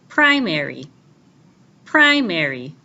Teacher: stress that is it's louder longer higher and clearer primary primary the first syllable Prai has the primary stress